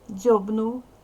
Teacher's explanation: в кінці першого складу дзвінкий приголосний вимовляй дзвінко